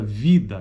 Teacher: ela é uma classificada como não arredondada alta portanto não existe arredondamento dos lados e ela ocorre o de maneira bem alta a língua ela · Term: vogal tônica oral